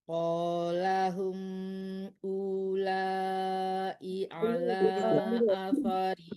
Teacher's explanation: Tidak dipanjangkan u-nya ya, karena wawnya tidak ada mati ya.